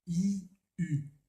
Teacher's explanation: si on garde la même ouverture et la même position de la langue, on garde tout pareil, mais on ramène les lèvres vers l'avant. Donc de I, on passe à U.